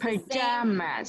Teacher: So I'm hearing za instead of ja.